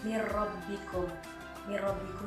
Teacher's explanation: bunyi huruf mati ke huruf yang depannya tanpa disertai dengan dengungan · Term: idgham bilagunnah